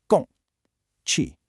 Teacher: Then you get two falling fourth tones, which have a sharp drop in pitch.